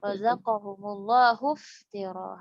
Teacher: Hamzah wasal tidak terbaca karena wasal.